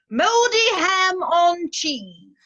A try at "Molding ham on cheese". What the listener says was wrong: No, not moldy ham on cheese. Molding ham on cheese. You need to enunciate.